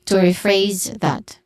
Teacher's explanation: Pronunciation wise, to is has a short O sound. Phrase is the stressed syllable here. Re has a long E sound, and then phrase has a buzzing sound at the end.